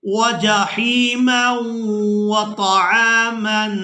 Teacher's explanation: ہم میم کو واو مشدد کے ساتھ ملا کر ادا کریں گے